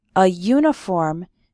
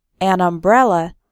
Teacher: uniform starts with a y sound, but an umbrella because umbrella starts with an a sound, a vowel sound